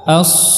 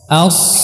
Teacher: harus pas di pangkalnya bisa juga di gusi ya as kemudian kita tinggikan pangkal lidah kita sehingga hurufnya menjadi tebal as dan kita rapatkan dua gigi seri As ya kita rapatkan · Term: haruruf sad